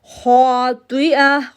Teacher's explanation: ہم پڑھیں گے کاذبہ کاذبہ، 3 نہیں کریں گے، خاطئہ، خا کو موٹا کریں گے، تو کو موٹا کریں گے اور یہ جو راؤنڈ تا ہے اس کو ہا میں تبدیل کر دیں گے